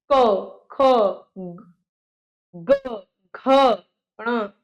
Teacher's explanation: क कंठ से निकले हैं